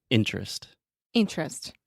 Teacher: when we have an unstressed syllable in the middle of the word, we just eat that sound, and I just say interest, Interest.